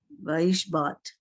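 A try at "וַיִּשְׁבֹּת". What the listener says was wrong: not bat. There's a dot. Boat,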